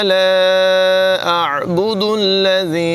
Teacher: ला जो है इसको 3 अलिफ तक लंबा करेंगे और यहाँ पर जो मद है ये मद मुनफसिल है। ला अअबुदुल्लज़ी, अअबुदु, अअबुदु, हमज़ा और आइन की आवाज़ में नुमायाँ फ़र्क करेंगे।